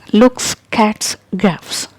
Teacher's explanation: Okay, so these sounds are voiceless sounds, and whenever letter S will appear after these voiceless sounds, it will be pronounced as S